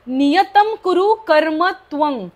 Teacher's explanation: पुढे क असल्यामुळे तो शंख मधला तो कं असा उच्चार होतोय त्या विसर्गाचा